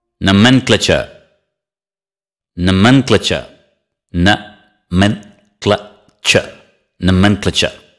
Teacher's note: Stress the second syllable.